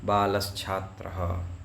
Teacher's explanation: दंत्य सकार के स्थान में तालव्य शकार हुआ शा, और आगे छात्रः का छा है इसलिए हुआ है बालश्छात्रः।